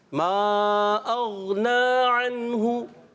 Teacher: عین حلق کے درمیان والے حصے پر زور دے کے